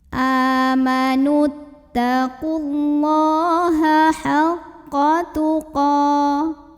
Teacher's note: Qa mad asli atau mad tabi'i karena ada baris fathah tegak di atas huruf qaf, maka bacanya panjang 2 harokat.